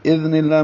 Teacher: اذ میں ذال نرمی سے باریک پڑھا جائے گا